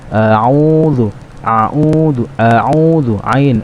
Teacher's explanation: Baik, huruf yang kedua adalah ain. Ain juga masih sama, yaitu huruf yang ada di tengah-tengah tenggorokan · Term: huruf ain